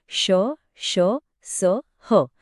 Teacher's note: उष्म व्यंजन कारण त्यांच्या उच्चारात हवेचे घर्षण होतं